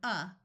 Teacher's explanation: a muffled sound that usually comes out sounding like a short u sound of uh or sometimes a short I sound of I the